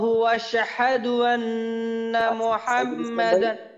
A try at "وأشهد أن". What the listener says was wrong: মনে করেন وأشهد أن যেন وأشهد أن না হয় এই হামজার উচ্চারণটা যেন বাদ না যায় যদি মনে করেন বলি وأشهد তাহলে কিন্তু হামজার উচ্চারণটা বাদ হয়ে যাবে তো এখানে বলতে হবে وأشهد وأشهد أن আবার এইখান থেকে ওয়াশহাদু